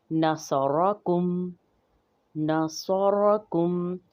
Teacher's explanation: جب را پر زبر ہو یعنی فتحہ ہو تو را موٹی پڑھی جائے گی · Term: تخفیم